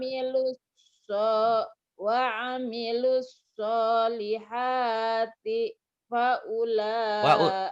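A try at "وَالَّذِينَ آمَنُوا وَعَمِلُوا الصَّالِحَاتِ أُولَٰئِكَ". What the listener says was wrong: Nggak ada fa. Ula. Wa amilus.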